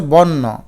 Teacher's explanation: অ এর উচ্চারণ ওকারের মত হয়। মানে আদ্য অ মানে শুরুতে অ যদি থাকে তাইলে অটা ও হয়ে যায়।